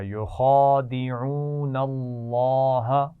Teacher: لام جلالہ سے پہلے نون پر زبر ہے تو کیسے پڑھیں گے اس کو؟ موٹا پڑھا جائے گا